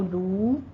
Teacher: واو مدہ ہے، دونوں ہونٹ گول کیجیے اور 2 کاؤنٹ کرنا ہے